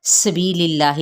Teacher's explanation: जलाला का लाम बारीक पढ़ा जाएगा क्योंकि लाम के नीचे ज़ेर है